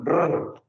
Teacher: Ese sonido se llama, pues un sonido multivibrante, es el sonido de la R